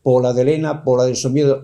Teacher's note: si ese pola queda átona al principio queda como desdibujado sin fuerza